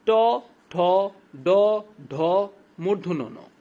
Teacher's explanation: উচ্চারণকালে জিহ্বার অগ্রভাগ উল্টে গিয়ে মূর্ধাকে স্পর্শ করে